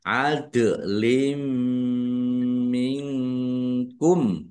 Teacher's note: Yaitu mendengung. Mim ditandai mimnya ada tasdidnya ditahan biar tampak mendengungnya. Adlim minkum. · Kasrah tanwin bertemu dengan huruf mim. Bacaan idgham bighunah. Bununah masuk dengan mendengung. · Masuk dengan mendengung, yaitu mendengung mim ditandai mimnya ada tasdidnya. · Nun sukun bertemu dengan huruf kaf, bacaan ikhfa, dibaca samar-samar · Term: idgham Bigunnah